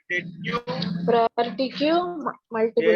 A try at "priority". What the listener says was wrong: ప్రాపర్టీ కాదు నాన్న, ప్రయారిటీ. Okay, ప్రాపర్టీ కాదు నాన్న.